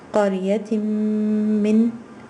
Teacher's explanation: Qariyatim min nabiyyin, and here it's not, you see, running tanween, because there's an idgham happening here. There's a merging of the noon sakin with the meme.